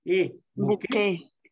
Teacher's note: Es una E muy alta. Sube la lengua.